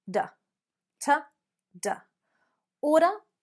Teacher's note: American Australian might use oughta again reducing that t down to a D sound